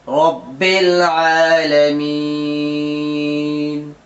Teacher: تو یہاں را پور ہوگی کیونکہ را پر زبر آ رہا ہے